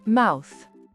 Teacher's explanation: On part d'un A ouvert et on finit en arrondissant les lèvres.